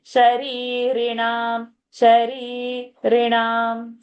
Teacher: Sharirina, that first re is dirgha, second is short.